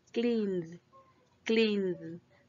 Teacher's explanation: Aquí es una sola sílaba. Vemos que termina en N, el verbo clean, clean, entonces vibra. Entonces no sería con T, sino con D.